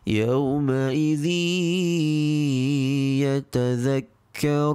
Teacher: When Tanwin meets the huruf ya, the ruling is idgham bi ghunnah, which means to merge with prolonged nasal sound.